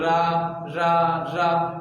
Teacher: आपको लगेगा कि जो वायु हो रही है वो कंपन हो रही है और थोड़ा सा रगड़ के वायु बाहर आ रही है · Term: प्रकंपित